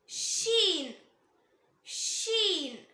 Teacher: நாக்கோட நடுப்பகுதி மேல் முரசை டச் பண்ணும்போது உச்சரிக்கணும், அதாவது நாக்கோட நடுப்பகுதி ரூஃப் ஆஃப் த மவுத்தை டச் பண்ணும்போது உச்சரிக்கணும்